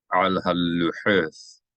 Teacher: Hold down the lamed because there's a digesh inside of it, which tells you to double the consonant sound. You double it as one continuation, not as two separate phonemes.